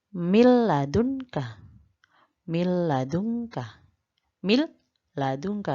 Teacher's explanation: idgham bilagunnah yaitu idgham yang tidak disertai dengan dengung